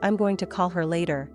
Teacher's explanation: For example, in the sentence, "I'm going to call her later," the emphasis usually falls on call and later, the other words kind of glide quickly by